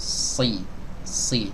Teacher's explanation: saat mengucapkan huruf shad, lidah belakang harus diangkat untuk merealisasikan sifat al-isti'la dan juga al-itbaq